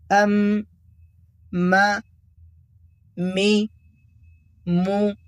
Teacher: حرف میم کا مخرج ہے دونوں ہونٹوں کی خشکی کا حصہ۔ جب آپ اپنے دونوں ہونٹوں کی بیرونی یعنی خشک حصے کو نرمی سے آپس میں ملاتے ہیں تو میم ادا ہوتا ہے۔